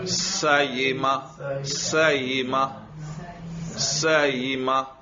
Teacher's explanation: حمزہ کو اپنے مخرج اور یا کے مخرج کے بیچ میں ادا کرو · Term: بین بین قریب